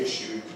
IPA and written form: ˈɪʃuː (issue)